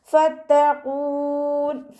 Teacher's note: ഫത്തഖൂൻ, ഫ ലൈറ്റ് ആക്കിയിട്ട് ഉച്ചരിക്കാൻ ശ്രദ്ധിക്കുക. മേലെ മുൻപല്ലിൻ്റെ അറ്റം താഴെ ചുണ്ടിൻ്റെ ഉൾവശത്ത് നനഞ്ഞ ഭാഗത്ത് വെച്ചിട്ട് ഉച്ചരിക്കുക. ത ശബ്ദ വന്നിട്ടുണ്ട്, രണ്ടക്ഷരങ്ങൾ ഉച്ചരിക്കുന്ന കനം കൊടുക്കുക.